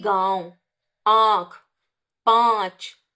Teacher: नाक से भी उच्चारण होता है और मुंह से भी उच्चारण होता है। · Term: अनुनासिक